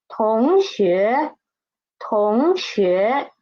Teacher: second character yo is neutral tone. So we should read it soft and quick.